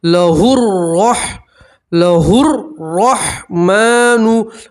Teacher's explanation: را کے اوپر زبر ہے, را کو آپ پور پڑھیں گے, موٹا پڑھیں گے.